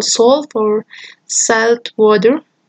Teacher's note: The second allophone is the dark allophone, because it goes before consonants or pauses, or even more before the approximants of this approximant, as in this example, salt or salt water.